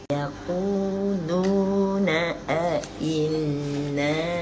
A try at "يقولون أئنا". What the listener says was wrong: jangan sengihkan. Yaquluna inna. Tengok inna.